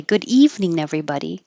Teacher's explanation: there's only a connection between good evening and nothing between evening and everybody